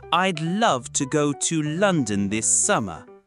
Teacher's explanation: Some words get more weight. For example, I'd love to go to London this summer. Clap on love, lun, and some. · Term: stressed words